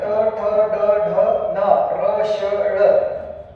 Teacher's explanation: ज्या वर्णाचा उच्चार करताना जिभेचे टोक मृदेला जाऊन भिडते आणि त्या ठिकाणी उच्चार होतो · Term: मूर्धन्य वर्ण